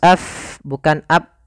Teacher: jangan ditutup, tapi af mengalir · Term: hamas